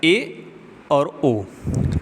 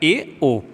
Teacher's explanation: ठीक, संवृत्त स्वर में लगभग बंद रहता है और अर्धसंवृत्त में संवृत्त स्वर से थोड़ा सा ज़्यादा मुख खुला रहता है